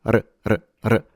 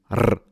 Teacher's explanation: So, when you have double R, it's a stronger trill of your R, fully showing off your rolled R's. But when it's a single R, it's still trilled, but it's a much shorter and faster sound.